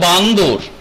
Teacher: তো মজার ব্যাপার এই ক্ষেত্রে লক্ষ্য করে দেখো, বানর থেকে হয়ে গেল বান্দর, দ এসে হাজির হলো, মানে লেজটা বড় হলো।